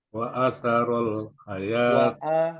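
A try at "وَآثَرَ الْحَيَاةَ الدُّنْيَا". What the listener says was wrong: wa a-nya panjang, Mbak.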